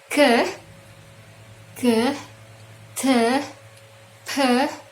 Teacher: K, T, dan P itu bunyinya hanya keluar dari bagian mulut, bukan dari tenggorokan. K, T, P itu keluarnya dari mulut, sehingga tidak ada getaran pada tenggorokan, maka disebut voiceless sound